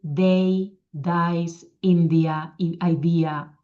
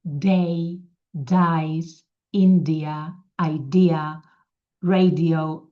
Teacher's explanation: la D de l'anglès, veus que la llengua aquí es nota que està més enrere